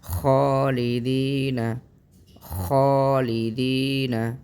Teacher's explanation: پڑھتے ہوئے خ کو ادا کرتے ہوئے منہ بھر جاتا ہے۔ اسی کا نام موٹا ہونا ہے اور اسی کا نام جو ہے وہ پر ہونا ہے۔